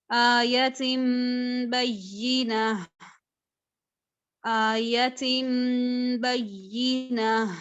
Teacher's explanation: अब या के ऊपर थोड़ा एम्फेसिस है क्योंकि उसके ऊपर तशदीद है, तो मैं इसको बय्यिना नहीं पढ़ रही, मैं इसको बय्यिना पढ़ रही हूँ।